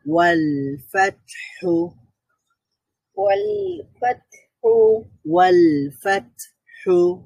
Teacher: এখানে তা বলার সময় আমাদের সাউন্ড বন্ধ হয়ে গেছে, কিন্তু বাতাস জারি ছিল।